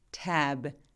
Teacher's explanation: 근데 tab처럼 B처럼 이렇게 유성음으로 끝나는, 울림이 있는, 성대가 울리는 소리들을 유성음이라고 하거든요. 이 tab처럼 저렇게 유성음으로 끝나는 단어들은 저 모음 소리, 에 소리를 조금 더 길게 발음해요